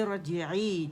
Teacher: اور اس میں تقریر جو ہے ہماری را میں واضح ہوتی ہے زیادہ جب یہ موٹی پڑی جاتی ہے